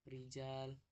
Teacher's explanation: Tarkik, ro ketika tarkik dibaca tipis